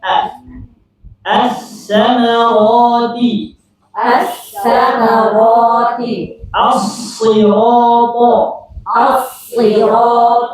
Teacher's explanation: Alif lamnya hilang. Lamnya hilang. Enggak ada. Langsung pindah ke huruf berikutnya. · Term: alif lam syamsiyah